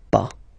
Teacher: Okay, we write it PAS, okay, but as usual, final S is not pronounced, so it's pas.